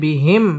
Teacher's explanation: মিম সাকিন ইজহারে খাস গুন্না ছাড়া পড়তে হবে